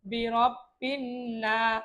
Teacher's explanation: জবরের পরে খালি আলিফ আছে, আমরা এক আলিফ টান দিব